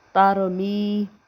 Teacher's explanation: یا مدہ کو بھی ایک الف کے برابر کھینچ کر پڑھتے ہیں